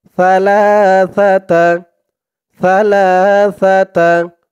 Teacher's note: সার উচ্চারণটা করার সময় জিহ্বার মাথা উপরের দাঁতের মাথার সাথে লাগবে একদম নরম পাতলা হবে